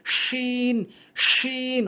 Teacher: জিহ্বার মাঝখানের অংশটা উপরে তালুর সঙ্গে লাগাবেন